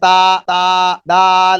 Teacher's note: تا اور دال کو جب پڑھنا ہے تو باریک پڑھنا ہے